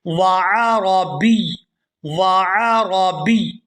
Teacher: یہاں پر بھی آپ لوگ وقف لازم کی علامت دیکھ رہے ہیں، تو ہم نے یا پر کرنا ہے وقف اور اس پر ہے تنوین، تو یہاں اس لفظ کو اس طرح سے ادا کریں گے وعربی، وعربی یعنی با کو یا مشدد کے ساتھ ہم ملائیں گے اور سختی کے ساتھ ملاتے ہوئے اس کو ادا کریں گے. وعربی وعربی اعجمی وعربی.